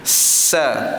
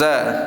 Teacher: Kalau sa tadi dia ada angin kalau Za tak ada angin tah nafas Za okey kita muncungkan huruf Sin Jadi huruf SH